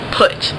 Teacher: it's pronounced towards the back and with your mouth nearly closed. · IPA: [ʊ]